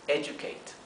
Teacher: Fíjense que en inglés, generalmente cuando tenemos una D y una U, no se pronuncia do ni du, se pronuncia you